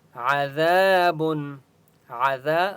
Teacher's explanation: ذال کو ایک الف کی مقدار کھینچ کر پڑھیں گے اور ذال کو نرمی کے ساتھ پڑھیں گے بن تنوین ہے